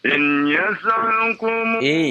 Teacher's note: nun sukun bertemu dengan iya. Terjadi idgham bi gunnah ya. Jadi ditahan 2 harokat.